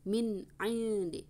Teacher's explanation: Idhar halqi, sukun ketemu dengan ain, harus jelas.